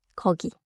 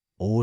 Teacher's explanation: 입술에 힘을 빼면 어, 둥글게 하면 오.